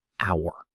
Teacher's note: The h is silent. So, it sounds like a vowel